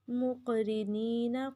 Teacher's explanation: مقرنین قاف پہ کلکلا اور قاف کو پر بھی پڑھیں گے ، را کو لمبا نہیں کرنا، مقرنین نہیں پڑھیں گے، مقرنین،